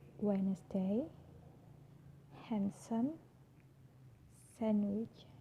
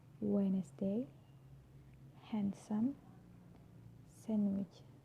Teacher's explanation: I'm not pronouncing the D, I'm just pronouncing the N consonant sound